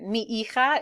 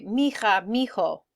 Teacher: Mi hija is how we'd want to say it, but oftentimes in Spanish they'll say mija because the H is silent, and so it kind of all goes together